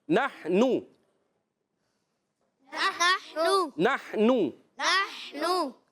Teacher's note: ہا کی ادائیگی حلق کے درمیان والے حصے سے